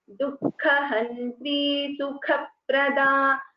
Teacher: Both the Kas are Mahaprana. So you should put little more stress there.